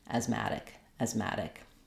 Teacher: it almost as an e vowel instead sometimes in certain words when the a is not stressed it becomes more reduced and we close the mouth a little more